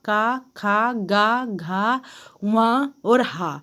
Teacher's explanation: यह सारे वर्ण जो हैं तो ये कंठ के द्वारा बोले जाते हैं तभी इनको कंठ वर्ण के नाम से जाना जाता है फिर